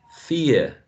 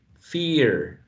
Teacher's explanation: RP, diphthong, fear, general American, fear, right? Monophthong.